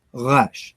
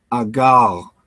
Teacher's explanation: And then in Israel, it almost sounds more French. It's more gutturalized, like resh.